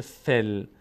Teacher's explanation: نفثاتی و من شر النفاثات فی، این میشه فی اما چون الف خوانده نمیشه، لام ساکنه، نیاز به آخرین حرکت ما قبل داره، الف که حرکت نداره، یا هم نداره، این کسر مال فا هست، ف میچسبه به لام دیگه نمیشه فیل، میشه فل. این یا و الف انگار نیست، میشه فل.